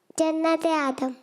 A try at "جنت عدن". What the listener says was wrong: آدم نہیں, عدن. عدن, دن نون عدن.